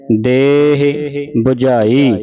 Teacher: ਦਦੇ ਨੂੰ ਲਾ ਲੰਮੀ ਕਰਕੇ ਹ ਨੂੰ ਸਿਹਾਰੀ ਥੋੜੀ ਬੋਲਣੀ ਹੈ